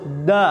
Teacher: nafas keluar tidak ada nafas berhembus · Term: jahar